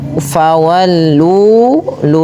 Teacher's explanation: Maka di sini banyak sekali mad thabiinya pada lafal ma panjangkan dulu dua harakat karena terdapat bacaan mad tabi'i. Yaitu ditandai dengan adanya huruf ma yang berharakat fathah bertemu dengan huruf mad yaitu alif ma.